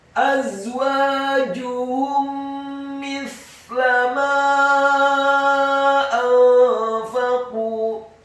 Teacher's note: mim yang sukun bertemu dengan huruf mim pada kata mithla. Hukum bacaannya adalah idgham mimi, mendengungkan atau menggunakan 2 mim.